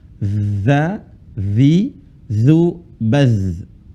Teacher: ujung lisan ketemu dengan ujung gigi seri atas karena ini huruf dza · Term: huruf za